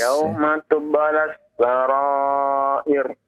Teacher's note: Ra yang di akhir di kalimat tersebut sebelumnya adalah kasrah ya. Maka dibaca dengan tipis, jangan ditebalkan ya. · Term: dibaca tipis